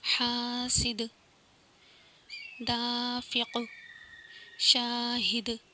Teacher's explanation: حاسد، دافق، شاہد، ایسے یہ قلقلہ ہو رہا ہے، لاسٹ میں حرف قلقلہ کی آواز پلٹ کر آ رہی ہے، تو یہاں پہ قلقلہ ہوگا۔